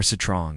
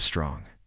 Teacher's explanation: They insert a small vowel sound between the consonants.